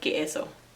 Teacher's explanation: So one thing that's pretty obvious to me is they skip S's at the end of words. Really, they skip a lot of syllables and actually blend down 3-syllable words into 2 syllables or things like that.